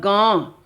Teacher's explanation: यह जो ध्वनि जो है मुख से भी सांस के माध्यम से बाहर निकल रही है और नाक से भी निकल रही है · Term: अनुनासिक